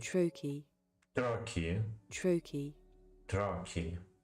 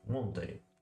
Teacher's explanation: a stressed syllable followed by an unstressed one, as in the word Monday.